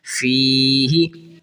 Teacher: فی ہی، فی ہی، ہا کو نہیں کھینچنا، یاد رکھیں، اکثر بچے پڑھتے ہیں فی ہی، ہا کو کھینچنا نہیں ہے، بس ہلکا سا، بس زیر جتنا کھینچنا ہے